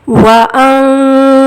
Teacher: ان نون کی آواز کو ناک میں چھپا کر پڑھیں گے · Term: اخفا